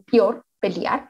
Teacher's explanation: Y pues obviamente estos elementos de, que también lo digamos en el español colombiano, que la eliminación de hiatos, que los convierten en diptongo